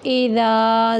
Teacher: اذا حمزہ کو جھٹکے سے اور ذال کو نرم طریقے سے پڑھیں گے۔